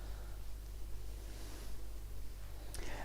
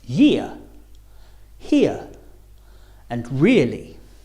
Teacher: be a little more open for the second row sound so as you say ear your mouth should open a little bit starting on the I and finishing on the ear